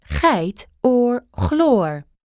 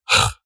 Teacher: This is made in the exact same spot as that Dutch back R. Your tongue raises up all the way in the back, and as the space gets smaller and smaller between your tongue and your uvula, you get h. For many, this one tends to be a bit easier than the Dutch back R. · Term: hard G